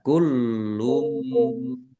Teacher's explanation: Lamnya ada tasdidnya, ditekan dan ditahan biar kulum tampak dobelnya.